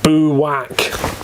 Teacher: pronounces book in two syllables over emphasizing it